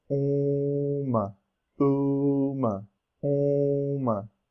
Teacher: For uma, you will of course pronounce the M, but make sure that you still add nasalization to the U. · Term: Nasalized